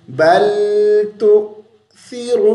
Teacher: सीन भी नहीं पढ़ना, मजहूल भी नहीं करना, ज़ुबान को बाहर निकाल के